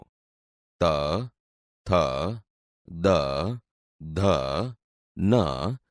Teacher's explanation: જેવા વ્યંજન બોલતી વખતે જીભ દાંતને અડે છે આથી તે દંત્ય વ્યંજન છે